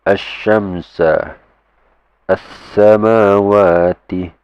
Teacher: straight away you skip the lam altogether